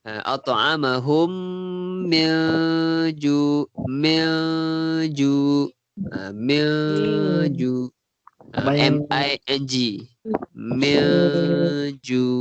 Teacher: Okey, lepas tu mim tu nun mati bertemu jim, ikhfa hakiki, kita dengungkan bacanya.